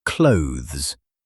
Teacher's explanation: it should sound close to the word close, but with a soft, blended th sound tucked inside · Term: one syllable